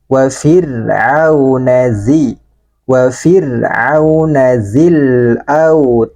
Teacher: Wa ro ini dibaca tarqiq, ya, dibaca tipis.